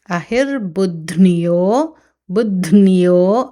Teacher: ధకార నకార యకార 3 శబ్దాలు వినిపించాలి